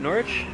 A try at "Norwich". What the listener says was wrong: Oh, you pronounced it with a W. Silent. Norwich. Norwich.